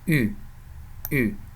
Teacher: in some Western varieties of Mongolian, this vowel is pronounced frontally